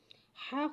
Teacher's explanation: हलक के दरमियान वाले हिस्से से अदा होता है · हलक के ऊपर वाले हिस्से से अदा होता है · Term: रफ हलक